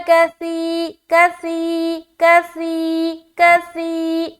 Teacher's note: سا کو ادا کرتے ہوئے سیٹی کی آواز نہیں آنی چاہیے۔ ود کسی کسی کسی کسی، زبان کی نوک کو ثنایا علیہ کے کنارے پر لگانا ہے اور منہ کو اوپن کرنا ہے، اس طریقے سے ہم سا ادا کرتے ہیں۔